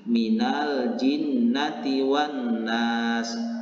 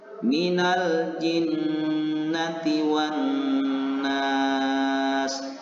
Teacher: membaca huruf nun yang bertasdid ini dengan cara menekan huruf nun yang bertasdid, kemudian menahannya selama 2 harokat dan disertai dengan dengung.